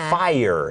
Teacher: เหมือนจะเป็นพยางค์เดียวแต่ว่าเหมือนลากเสียงนิดๆ